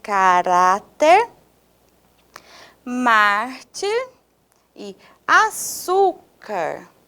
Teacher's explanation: a penúltima sílaba terá mais tonicidade